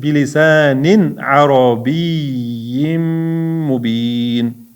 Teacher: Bilisanin tanvin ain harfi ayn izhor harfi bo'ladi. Shuning uchun tanvinni aniq o'qiymiz